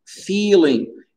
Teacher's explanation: faut bien allonger le I